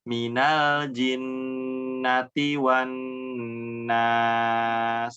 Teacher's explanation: Jadi coba nanti dibaca lagi huruf sinnya ya, yang di akhir dialirkan lagi ya desisnya biar terdengar